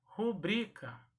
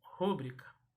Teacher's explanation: Mas esta palavra trata-se de uma palavra paroxítona. Então, a sílaba tônica é a penúltima, é o bri.